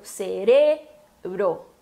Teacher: no português a gente tem a sílaba tônica no C e no espanhol no re